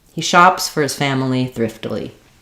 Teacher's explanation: all of our content words chops family and thriftily don't have any reductions but our little words go by quickly and maybe a little bit reduced · shops got a little bit more length and clarity because it is the verb